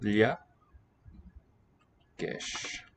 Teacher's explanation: So double L is a palatal.